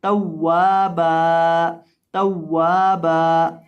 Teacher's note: अक्सर लोग वक़फ़ के अंदर इसको पढ़ देते हैं तौवाबा, तौवाबा, यानी बा को आखिर से लंबा नहीं करते। तो बा को लंबा करेंगे जब वक़फ़ करेंगे, क्योंकि इसके साथ अलिफ पढ़ा जाएगा, अलिफ मद्दा की वजह से इसको लंबा किया जाएगा।